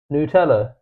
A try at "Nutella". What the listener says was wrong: It's Nutella. Because it's like you don't say newt. I want a newt. You say I want a nut.